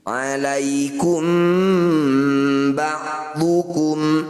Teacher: sedangkan kalau Mim sukun ketemu ba ini disebut bacaan Ikhfa Syafawi cara bacanya bunyi mim dengungkan dua harakat rapatkan bibir · Cara bacanya bunyi mim dengungkan 2 harokat, rapatkan bibir.